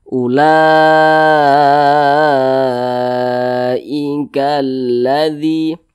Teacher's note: panjangnya itu lima harakat nah atau kira-kira lima ketukan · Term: mad wajib muttasil